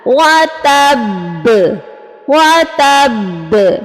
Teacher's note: با کے اوپر جو ہے زبر اس کو ہم ڈراپ کریں گے اور ہوگا وَتَبْ وَتَبْ، ٹھیک ہے. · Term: قلقلہ